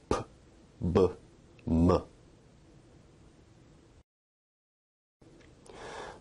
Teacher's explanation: Bilabial sounds are produced with both lips